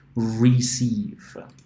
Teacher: So here it sounds like an E, a long E, receive.